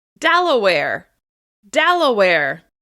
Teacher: you need to hold that stressed syllable, and then close back down afterwards.